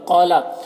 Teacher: قولا، قاف کو پر پڑھیں گے، یہ حروف مستعلیہ میں سے ہے۔ الف مدہ ہے، ایک الف کے برابر کھینچیں گے۔